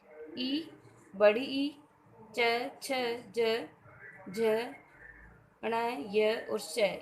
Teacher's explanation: ई, बड़ी ई, च, छ, ज, झ, ण, य और श, ये सभी तालु से बोले जाते हैं, अतः इन्हें तालव्य वर्ण कहते हैं।